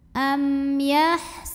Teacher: Am yahsudu, du mad tabi'i zahiri, karena ada waw sukun yang didahului baris dhammah. Maka cara bacanya dal kita panjangkan 2 harokat.